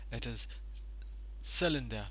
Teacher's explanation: the stress is on the first syllable. It is cylinder.